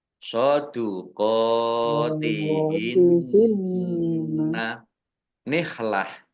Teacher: Soduqotihinna qaf fathah berdiri mat tobi'i panjang 2 harokat. Nun tasdid dibaca gunnah atau mendengung ditahan 2 harokat.